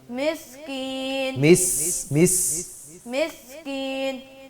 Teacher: سیٹی کی آواز ہے سین میں